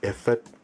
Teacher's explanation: the number for 15 is efik, which has a low tone and a high tone. Efik, efik-ibibio, efik-ibibio, low, high, low, low.